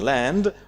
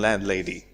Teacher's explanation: we will hear the D in land, but not in landlady. Landlady, we drop T.